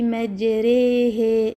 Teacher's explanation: A common mistake is allowing imala to continue into the following ha, causing it to sound slanted. The ha should instead be pronounced with a clear, pure fatha.